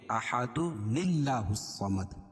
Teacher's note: تنوین کے بعد اگر حمزہ وصل ہو اور اس کے بعد آنے والا حرف ساکن ہو تو تنوین کے نون کو، یہ تنوین کو جو ہے نون کو زیر دے کر پڑھتے ہیں. تو تنوین کے نون کو زیر دیتے ہیں، کیوں کہ یہ ملانے کی صورت میں جو حمزہ وصل ہے درمیان میں یہ گر جائے گا.